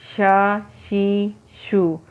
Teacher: شین کی آواز منہ میں پھیلتی ہوئی ہونی چاہیے